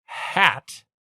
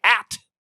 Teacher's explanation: the dropping of the H is such a Cockney lowbrow thing